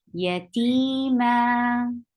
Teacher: So you are exchanging the sound of tanween to 2 counts long vowel. This is why it is called mad awal.